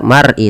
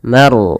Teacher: huruf ro kita namakan dengan ro tafkhim. Harus ditebalkan. Jangan dibaca mar'i tapi mar. · Ma tipis rnya tebal.